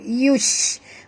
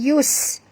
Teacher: bunyikan tafashi pada huruf shim. Yush, bukan yus.